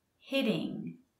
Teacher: notice that double t sounds like a d